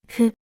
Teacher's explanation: It's important to remember that hu is not pronounced as the F sound, since Japanese doesn't have an F pronunciation.